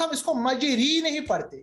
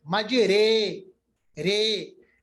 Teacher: इसको कहते हैं इमाला, जब हमें री के बजाय, छोटी ए के बजाय बड़ी या पढ़ना होता है, मजरे, रे, इस वक्त भी रा जो है वो बारीक पढ़ा जाता है।